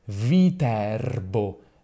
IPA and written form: viˈtɛrbo (Viterbo)